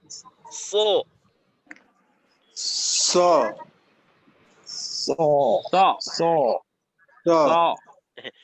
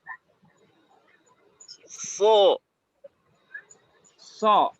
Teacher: তো সদ উচ্চারণ করার জন্য আমরা যে কাজ করব, সর্বপ্রথম জিহ্বার আগাটা সামনের নিচের দুই দাঁতের আগার সাথে লাগাবেন। তারপর জিহ্বার মধ্যখানটা উপরের তালুর সাথে, জিহ্বার গোড়াটা একটু উঁচু করবেন।